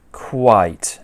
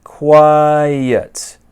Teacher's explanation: how many sounds are there in this first one quite just the one but this one here quiet there's two sounds